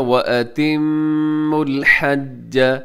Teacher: मीम मुशद्दद है, यहाँ मीम के ऊपर गुन्ना कीजिएगा